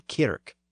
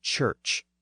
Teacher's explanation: We find the prominent northern K sound in kirk instead of the southern church.